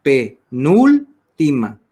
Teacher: en ese caso se carga la voz en la palabra, en la sílaba nul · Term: antepenúltima